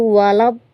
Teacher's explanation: pelafazan waladolin ini sering diganti dengan dal.